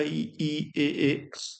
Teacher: हमारी जीवा का जो अगला हिस्सा है उससे बोले जाते हैं। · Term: अग्र स्वर